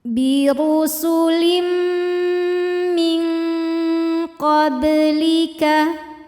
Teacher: Ada hukum ikhfa hakiki dengan tingkatan dengung ab'ad, ikhfa ab'ad, sebab ada nun sukun yang menghadapi huruf qaf. Cara bacanya bunyi nun disamarkan ke qaf disertai bunyi dengungan.